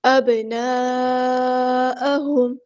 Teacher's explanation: یعرفون ابناءہم، با ساکن ہے، یہاں پہ کلکلا ہوگا، یہاں پہ مد آئی ہے، کنیکٹڈ مد، مد متصل، ہم نے اسے 4 یا 5 کاؤنٹ لمبا کرنا ہے